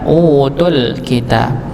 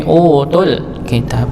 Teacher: tu di sini sebenarnya panjang, tapi dikarenakan dia masuk kepada alif lam maka dibaca 1 harakat.